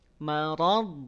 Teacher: Maro, ro tebal, dot juga tebal.